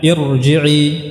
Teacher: di sini kasrahnya bukan kasrah asliyah tapi kasrah yang 'aridah, ya, maka tetap ditebalkan